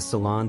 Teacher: The stress is on the second syllable, and the O has a soft, open sound.